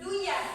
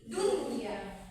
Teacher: Jadi walaupun dia idgham bi gunnah, jadi ada izhar mutlak. Misalnya walaupun nun matinya ketemu ya, akan tetapi dia menjadi jelas, bukan duya tapi dunya.